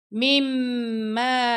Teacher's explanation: یہاں پہ ہم غنہ کریں گے، میم مشدد آ گیا